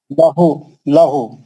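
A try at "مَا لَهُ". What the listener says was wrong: लहू नहीं, लहू जबर नहीं है भाई, पेश है, पेश। माँ लूहू, माँ लू दो लोटों से पढ़ो।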